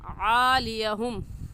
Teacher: आइन हुरूफ हल्की में से है, यानी हलक के दरमियानी हिस्से से आइन निकलती है